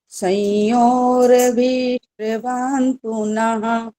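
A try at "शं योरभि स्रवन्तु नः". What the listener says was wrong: रुक जाओ, दो गलतियां हो गई यहीं पर। रभी एक तो बड़ी की मात्रा बोल दी और शइयों भी नहीं बोलना, स निकल आया मुंह से। तो ये ध्यान रखना पड़ेगा।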